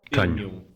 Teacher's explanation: The characters nh represent ня, a palatal nasal.